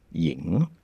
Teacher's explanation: the voice starts pushing down low and then just releases normal